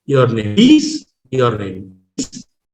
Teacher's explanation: And the last word, please, shows a rise of the tone. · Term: Rising tone